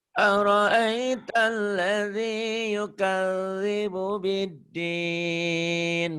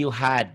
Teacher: Sebagian orang-orang dari Jawa K-nya jadi H.